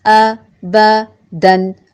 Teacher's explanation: حمزہ ہے، محقق ادا ہوگا. متحرک ہے، لمبا نہیں ہوگا. با کا مخرج ٹھیک سے ادا کر کے دونوں ہونٹوں کے تر حصے کو ملاتے ہوئے، لمبا نہ کرتے ہوئے.